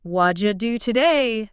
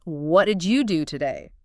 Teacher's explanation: The did you becomes ja.